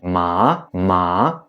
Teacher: the second tone that is going up, so like you want to ask a question